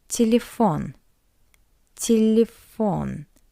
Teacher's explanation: in an unstressed position we read it as a weak e · You can see two ye, but we pronounce it as a weak E.